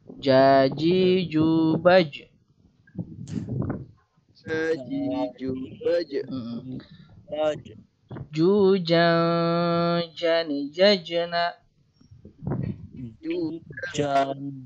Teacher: tengah-tengah lidah menyinggung langit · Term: huruf ja